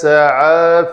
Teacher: سین دونوں دانت اوپر نیچے والے جڑے اور پیچھے سے زبان ٹکرائے تو یہ سین کا مخرج ہے